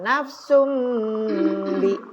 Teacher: ada nun mati di depannya ada B, maka bunyi nun lebur jadi M